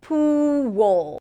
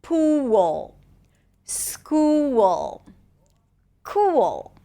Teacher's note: When the dark L appears after a tense ooh sound, then what happens is that we hear a W sound. Pool. And again, a mini O sound between the W and the L.